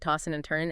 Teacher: the D and N might blend · Tossing and turning, you often drop the G sound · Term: G dropping